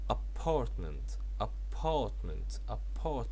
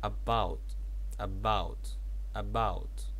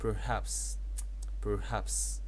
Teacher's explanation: اوكي طبعا الستريس على السكند سيلابل